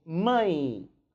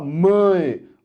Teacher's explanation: O som, embora esteja com a letra E, o som é de I.